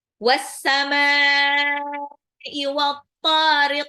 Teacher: Itu mad wajib mutasil harus dibaca 6 harokat.